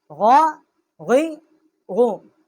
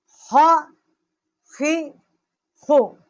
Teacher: غین اور خا جو ہیں، یہ دونوں حروف کا مخرج جو ہے یہ ادنائے حلق سے ہے